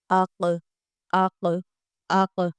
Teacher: यह जो हमारे गले के अंदर जिसको हम कौवा बोलते हैं इसको जब हलक के साथ टच किया जाए तो यह आवाज निकलती है। इसी के साथ आप हरफ के शुरू में अलिफ लगाएं और काफ को साकिन करें और लिखकर आप देखें अक अक अक बहुत आसानी से यह आवाज निकल जाएगी।